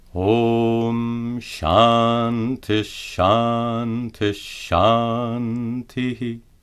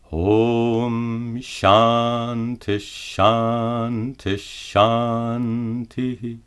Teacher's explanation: Note that the visarga is pronounced as sha to match the following letter.